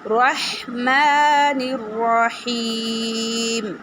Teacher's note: را کو موٹا پڑھنا ہے اور ہا کا مخرج نکالنا ہے